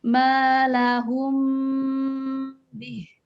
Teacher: Kemudian ikhfa safawi apabila mim bertemu dengan ba. Cara membacanya menggunakan huruf mim dengan tempo yang dipanjangkan.